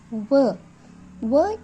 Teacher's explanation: ದಂತ ಮತ್ತು ಓಷ್ಠ ಅಂದರೆ ಓಷ್ಠ ಅಂದರೆ ತುಟಿ. ದಂತ ಹಲ್ಲು ಮತ್ತು ತುಟಿಯ ಸಹಾಯದಿಂದ ಉಚ್ಚರಿಸಲ್ಪಡುವ ಅಕ್ಷರಗಳು ದಂತೋಷ್ಠಗಳು.